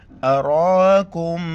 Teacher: را کے اوپر کڑا زبر ہے موٹا کر کے پڑھیں گے